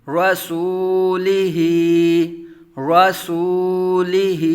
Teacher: پہلے پیش واو مدہ، را متحرک بغیر کھینچے بغیر جھٹکا دیے، سین متحرک واو ساکن سے پہلے پیش واو مدہ، ایک الف دو حرکات کے برابر کھینچ کر پڑھیں گے ، لام متحرک بغیر کھینچے بغیر جھٹکا دیے، ہا کھڑا زیر